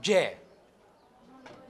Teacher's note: this is from two voiced phonemes and then the tip of the tongue okay against the alveolar region